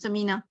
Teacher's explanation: نون اور میم کے اندر یہ آواز غنہ کہاں سے آتا ہے؟ ناک سے ہی آتا ہے. تو میم اور نون کی صفت ہی یہی ہے کہ غنہ ہوگا.